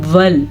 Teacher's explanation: لام ساکن ول، یہاں پہ رک جانا ہے، ولا نہیں پڑھنا